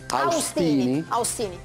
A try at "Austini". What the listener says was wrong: Ostini alla francese, AU si legge O.